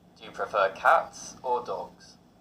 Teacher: in contrasting questions the intonation Rises then Falls